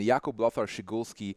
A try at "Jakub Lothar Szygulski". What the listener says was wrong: Why did you use NA accent when you said my Polish? Well, you're Polish and it's my surname.